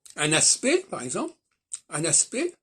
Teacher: je ne prononce ni le C ni le T de aspect